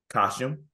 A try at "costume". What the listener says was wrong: you say costume with a with a CH